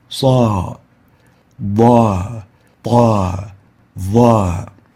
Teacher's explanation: they are elevated adherent with a fatha followed by the alif, causing them to have the highest level of tafkheem because they have the strength of adherence plus the strength of elevation plus the haraka of fatha plus the being followed by an alif. · we have the maximum tafkheem because it's elevated adherent and it is with a fatha with an alif.